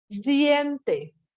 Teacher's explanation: el fonema D a comienzo de palabra se pronuncia de manera oclusiva, la D. Pero en oposición intervocálica se realiza de manera fricativa, que cambia la D con una rayita.